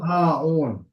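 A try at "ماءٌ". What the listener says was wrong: Maun ya. Jadi ini jangan dibaca ain ya. Hamzah tuh dari tajwidnya kan dari dalam rongga mulut ya. Al-ma'u ma'un.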